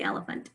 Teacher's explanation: we can actually hear a schwa both in the second syllable and in the third syllable